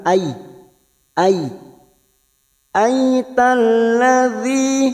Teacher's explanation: Basmalah [Tertawa] auzubillahiminasyaitanirrajim Bismillahirrahmanirrahim aritalladzi yukadzibu Bidin aradzi yang pertama ada harakat fathah yang bertemu Ya Sukun namanya huruf layin yaitu melunakkan harakat fathah yang bertemu Ya Sukun ini kita lunakkan a a aadzi masuk pada alif lam syamsiah